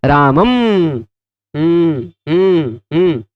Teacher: क्या, मुख नासिका वचनो अनुनासिका, मुख और नासिका दोनों से जिसका उच्चारण हो वह अनुनासिक है, और नासिकानुस्वारस्य, अनुस्वार का उच्चारण केवल नासिका से होता है। रामम, मुंह का प्रयोग किए बिना बंद मुंह से जो नाक से बोला जाए वह अनुस्वार है